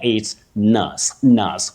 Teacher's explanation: That vowel glide, what we technically call a diphthong, it's not there. It's nus, nus, with a schwa, a weak vowel sound.